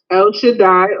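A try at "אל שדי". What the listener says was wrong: Al Shaddai. No, there's no E in the Hebrew.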